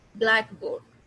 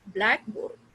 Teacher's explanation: board is clear but not stressed